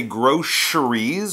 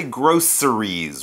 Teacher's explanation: they might say groceries with an sh sound for the C in the middle or some people say groceries with more of an S sound